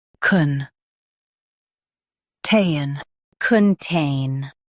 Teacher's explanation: Emphasize tain and keep con soft.